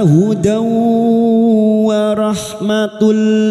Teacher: fathah tanwin bertemu wau idgam ghunah masuk pada huruf wau dan mendengung selama tiga harakat